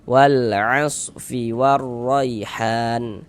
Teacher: Nah, maka ini alif lam bertemu dengan huruf ain huruf qamariyah, maka ini hukumnya alif lam qamariyah. Maka huruf lamnya dibaca idhar, dibaca jelas.